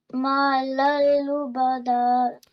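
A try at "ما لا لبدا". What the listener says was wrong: Ma lallubada. Press the lam a bit more. Ma lallubada.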